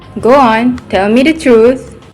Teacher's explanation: she did insert a glide consonant sound which is w in her speech